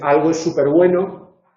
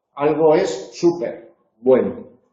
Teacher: Super, cuando es prefijo, es átono, entonces algo es súper bueno, pero cuando es adverbio es tónico.